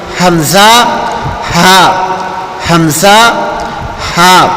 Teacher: مخرج نمبر 2 اقصی حلق ہے، اور اقصی حلق سینے کی طرف جو گلے کا حصہ ہے اس کو کہتے ہیں۔ اس سے 2 حرف حمزہ اور ہا ادا ہوتے ہیں۔